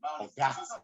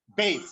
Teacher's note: So when they are very angry or when they are surprised, we observe the vowel is clipped.